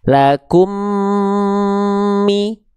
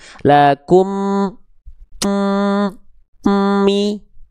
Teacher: Ditahan dengan dengung. Dengung itu adalah suara yang masuk ke dalam rongga hidung. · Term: idgham mimi